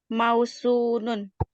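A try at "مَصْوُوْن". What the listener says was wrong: Depannya sod. Sod dulu baru wow. Maswunun. Itu aslinya ya. maswunun ini agak susah nih. Akhirnya wawunya digabungkan atau satu aja wawunya. Kemudian dhammahnya pindah ke huruf sebelumnya, huruf fat. masunun. Sehingga menjadi masu.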